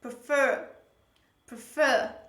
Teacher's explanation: actually in this word the stress is on the last syllable on the second syllable